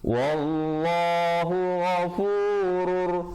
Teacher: idgham bila gunnah, asalnya ghafurun rahim tapi jadi ghafurur rahim. Dan diwaqafkan dengan 2, 4 ataupun 6 harakat ma'aril sukun di situ.